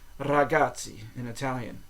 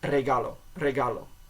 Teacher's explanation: the r in Spanish almost sounds like a d you don't Trill the r in Spanish as much as you do in Italian